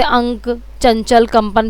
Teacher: अनुस्वार के उच्चारण में नाक से अधिक हवा निकलती है